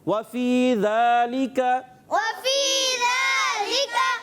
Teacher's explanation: ذالکہ میں ذال کی ادائیگی یہ بہت خاص خیال رکھنا ہوتا ہے, بعض بچے ذال کو زا سے بدل دیتے ہیں, تو ہم نے یہاں پر خاص خیال رکھنا ہے, ذال کو کلیئر رکھنا ہے, زبان کو اٹھا کر اور سامنے والے اوپر کے دانتوں کی کناروں سے لگائیں گے تو ذال ادا ہوگا